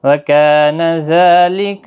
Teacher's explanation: وکان کا الف مدہ ہے، زال کے اوپر کھڑی زبر ہے، دونوں کو ایک ایک الف کی مقدار کے برابر کھینچیں